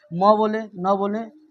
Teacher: इसका उच्चारण कहां से होता है तो मुख और नाक दोनों से होता है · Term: अनुनासिक